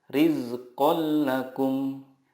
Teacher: bilagunnah adalah nun sukun atau tanwin bertemu dengan lam atau ro cara membacanya meleburkan nun sukun ke huruf berikutnya tanpa guna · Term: idgham bilagunnah